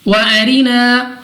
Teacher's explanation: را کو باریک اپنی آواز کو نیچے گرا کر پڑھیں گے